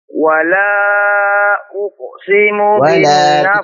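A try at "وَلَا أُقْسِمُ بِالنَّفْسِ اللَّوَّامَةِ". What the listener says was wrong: Tipiskan. Wala, lanya tipis. Wala uqsimu.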